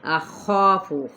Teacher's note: خا حروف مستعلیہ میں سے الف مدہ کے ساتھ اس کو پر پڑھنا ہے